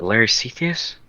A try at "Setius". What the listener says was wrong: Setius, the H is silent.